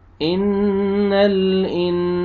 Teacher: इन नून मुशद्दद है, गुन्ना करेंगे।